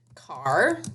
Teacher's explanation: The R sound just keeps going. It doesn't have a consonant that shuts off that R sound.